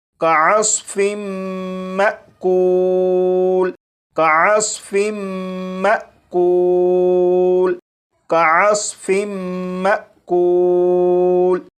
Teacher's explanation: اب ان دونوں الفاظ کو پڑھیں گے، یہاں پر میم مشدد پر غنہ بھی ہوگا اور یہاں پر الف کے اوپر جزم ہے، یعنی یہ حمزہ ساکنہ ہے، تو حمزہ ساکنہ کو جھٹکا دے کر پڑھیں گے